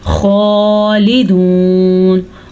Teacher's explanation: खौ का जो मखरज है इसको ध्यान से हलक से निकालिए, इसको हा नहीं पढ़ सकते